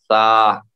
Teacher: زبان کی نوک کو اوپر کے دانتوں سے لگائیے، تو سا کا مخرج جو ہے نکلے گا